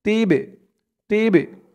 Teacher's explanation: এই বাটা হচ্ছে কলকলার হরফ ধাক্কা দিয়ে পড়তে হবে